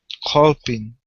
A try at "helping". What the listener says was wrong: All right, now here you're saying helping. Instead of all, it's L. Raise your tongue a little bit more. Okay, you're trapping the sound in your throat. Instead of all, it's hell, helping.